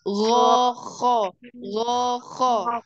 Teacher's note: dia satu makhraj ada di tenggorokan bagian atas tetapi gesekannya berbeda